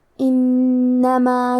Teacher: حرف نون پہ تشدید ہے تو ہم 2 حرف کے برابر نون کو پڑھیں گے